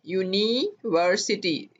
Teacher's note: आवाज देखें य की आ रही है, हालांकि ये यू जो है वोवल लेटर है, पर आवाज चूंकि इसकी वोवल नहीं है